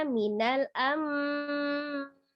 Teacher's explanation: Merubah nun sukun menjadi mim sukun disertai dengan gunnah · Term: iqlab